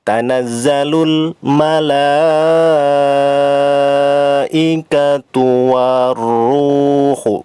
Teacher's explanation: Jadi bunyi huruf lamnya hilang ya, lebur menjadi huruf ro. Langsung ke huruf berikutnya. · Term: alif lam syamsiyah